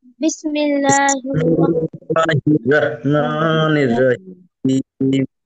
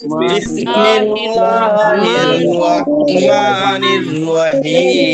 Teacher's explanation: আল্লাহ শব্দের লামের ডাইনে জের চিকুন করে পড়তে হয়।